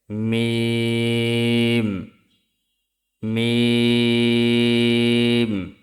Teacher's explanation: দুই ঠোটে শুকনা জায়গা হইতে উচ্চারিত হয় মিম